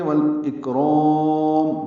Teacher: لمبا کریں گے والاکرام وقفاً، اور میم ساکن پہ ہونٹ بند کر لیں گے، اظہار ہوگا.